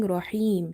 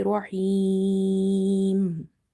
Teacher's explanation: you will stretch up to three alif instead of one alif. Instead of saying rahim, you will say rahim. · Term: madde arid